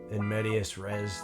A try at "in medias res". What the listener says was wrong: well, if you're going to pronounce the first D like that, you got to pronounce the second D.